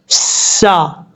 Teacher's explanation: یہاں پر سین میں سیٹی آئے گی کیونکہ حروف صفیریہ میں سے ہے